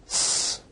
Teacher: is a voiceless alveolar fricative